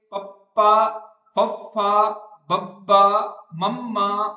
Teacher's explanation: ਜਿਹੜੇ ਬੁੱਲ ਹੈਗੇ ਆ ਉਹ ਹਵਾ ਨੂੰ ਰੋਕ ਕੇ ਬਾਹਰ ਛੱਡਣਗੇ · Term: ਦੋ ਹੋਂਠੀ